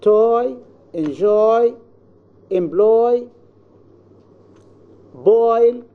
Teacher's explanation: the glide begins with a tongue position that is for o and moves in the direction of e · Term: closing diphthong oi